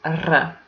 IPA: R